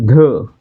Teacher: तर धचा उच्चार करताना ह चा उच्चार होतोय म्हणजे ह च प्राबल्य आहे